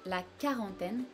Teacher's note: we do not hear the U part of this word, we only say quarantaine, like a K or just a regular K sound.